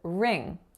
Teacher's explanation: So in a ring, there's a North American R to start off the syllable. The vowel is a lax I sound. And then the consonant is a nasal velar consonant.